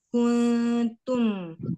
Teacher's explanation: Mim ada gunahnya tetap tetapi tidak terlalu lama ditahan, hanya menunaikan sifat bainiyah saja pada huruf mim.